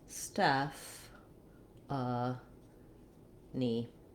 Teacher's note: letter e says the vowel e like in red or head ph does say the f sound and then our a is a schwa we end with the e sound